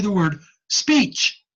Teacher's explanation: when I say the word speech, the tonal part is E, and the noise parts are ch.